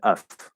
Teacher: instead of dropping the consonant and just saying the schwa sound, they're changing the V to an F